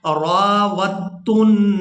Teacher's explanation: یہاں را کو الف مدہ کی وجہ سے کھینچ کر ادا کریں گے اور اس کے بعد واو کو تا مشدد کے ساتھ ملائیں گے. دال ساکن کو ہم نے یہاں پر چھوڑ دینا ہے.